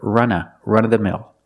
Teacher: You can pronounce it with v, run of the mill, but usually you hear people say run-of-the-mill. Because after of, we have a consonant with th in the, people don't pronounce the v all the time. It's more common to hear run-of-the-mill.